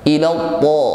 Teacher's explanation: Huruf ta ini idbaq dan isti'la, bunyinya tebal. Ila ta, bunyinya kuat, tidak ada nafas yang mengiringinya.